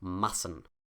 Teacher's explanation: this is a short A, and the consonant sound is a soft S